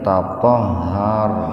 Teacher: Ra mati didahului fathah. Jadi ra-nya dibaca tebal. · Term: tafhim